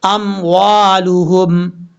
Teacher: لام کے بعد جو ہا ہے یہ ہا بھاری ساؤنڈ کے ساتھ پڑھا جائے گا